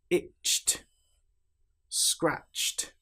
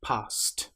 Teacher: You will notice in these examples that we don't pronounce the e sound at all. The t is almost like an extra consonant that links directly to the consonant before it.